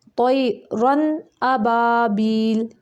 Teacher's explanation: حمزہ جو ہے حروف حلقی میں سے ہے، تو ادھر صرف ہم ظاہر کریں گے، طیرن ابابیل، رن نہیں کریں گے۔ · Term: اظہار